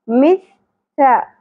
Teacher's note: سا کے اندر سیٹی کی آواز نہیں ہونی چاہیے